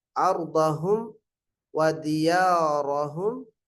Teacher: ரா ஃபத்ஹா பெற்று வரனால வல்லினமா சொல்ல வேண்டும்